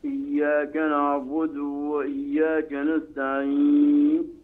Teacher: ولا تمد الياء من إياك واسرع بها النطق وراع فك. إياك نعبد وإياك نستعين.